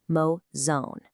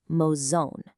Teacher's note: That indicates a nasal sound, almost like you're speaking the end of the word through your nose